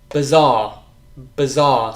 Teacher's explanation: the I, is not I, it's actually the schwa sound